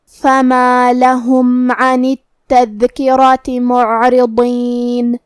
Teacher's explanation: حرف الضاد کو ہم زبان کے کروٹ اور اوپر کے داڑھوں کی جڑ سے ادا کریں گے، جو کہ ضاد حروف تفخیم میں سے بھی ہے، تو ہم یہ حرف کو بھاری آواز میں اور منہ پھلا کے ادا کریں گے.